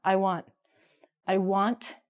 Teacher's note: I want, we don't say the T.